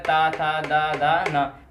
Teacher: तो इसमें दंत का उपयोग किया जाता है, उनको क्या बोला जाता है? दंत वर्ण हो जाता है।